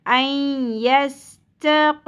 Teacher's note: क़ाफ को पुर करना है, लेकिन क़ाफ का इम्पैक्ट ता पे नहीं आना चाहिए।